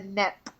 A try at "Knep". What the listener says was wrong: The Knep. You got to pronounce the K. The Knep.